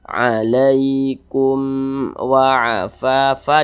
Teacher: Huruf mim sukun di depannya huruf wa. Di sini bukan huruf ba, bukan huruf mim, berarti Hukumnya adalah izhar syafawi. Maka dibaca jelas tidak berdengung. Jadi dibaca pendek saja.